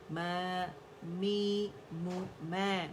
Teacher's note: دونوں ہونٹوں کو خشک سے ملائیں گے، سامنے فرنٹ سے اس کی آواز نکلتی ہے